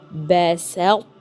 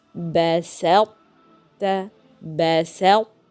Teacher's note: بسطت. We have the characteristic of the emphatic ta. The ta here is heavy, so we cannot drop these characteristics of ta. بسطت, بسطت, as if I'm gonna to pronounce the ta, but I have the characteristic, but the pronunciation of ta is incomplete. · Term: fusion not complete